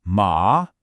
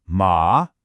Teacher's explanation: It starts lower and rises up, almost like you're asking a question. Ma. This means hemp, ma. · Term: the second tone, second tone